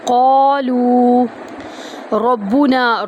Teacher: لو، واو مدہ آ گیا، یہاں پر بھی ہم اس کو لو کو بھی ایک الف کے برابر لمبا کریں گے، تو قا اور لو دونوں کا وزن ایک برابر ہو گیا، ٹھیک ہے، دونوں کو اکٹھا ایک جتنا ہی کھینچنا ہے۔ · را کو با کے اندر داخل کریں گے، را کو پر پڑھیں گے، نون کو پھر ایک الف کے برابر لمبا کریں گے، ربنا، ربونا پڑھیں گے تو غلط ہو جائے گا، با کو لمبا نہیں کریں گے، ٹھیک ہے، ربنا۔